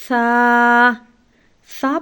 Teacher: آپ نے اپنی زبان کی نوک کو دونوں دانتوں کے درمیان رکھنا ہے تاکہ سا کو نرمی سے ادا کیا جا سکے۔ سا پڑھتے ہوئے سیٹی کی آواز ہرگز نہیں نکلنی چاہیے۔